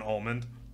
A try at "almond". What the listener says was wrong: Almond. You just pronounced the D. Almond.